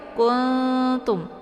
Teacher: ya kultum jangan Kung jangan kuntum jangan langsung Ung ya tapi disamarkan bunyi Nun nya dan dengungnya sedikit saja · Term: ikhfa aqrab